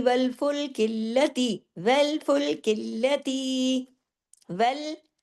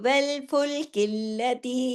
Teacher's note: वेल बारीक आपके होंठ हंसने की तरह खुले